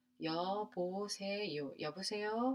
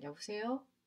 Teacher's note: Usually it's a rising intonation.